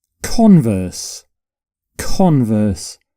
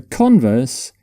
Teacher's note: So for this particular word, you put the stress on the first syllable.